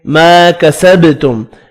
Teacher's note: الف مدہ ہے، 1 الف کی مقدار میں کھینچ کر پڑھنا ہے، با ساکن پر قلقلہ کریں گے۔ یہاں میم کا اظہار ہوگا جو کہ اظہار شفوی کہلاتا ہے۔